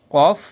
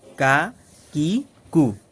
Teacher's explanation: কফ এটা কণ্ঠনালী থেকে উচ্চারণটা ছিল, আর কাফ এর উচ্চারণটা কা স্বাভাবিকভাবে। ঠিক আছে, এটা আর ভিতর থেকে কণ্ঠনালী থেকে আনার প্রয়োজন নাই।